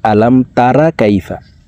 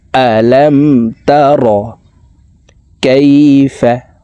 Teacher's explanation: আলাম তারা বলা যাবে না, এই রকে র বলতে হবে, রা বলা যাবে না। র জবর র, র জবর র।